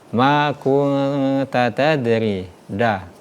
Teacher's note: Contoh ayat ke-52 tadi, huruf dah, ma kunta tadri, dah. Selain sifatnya qalqalah, dah ini ternyata sifatnya itu syiddah juga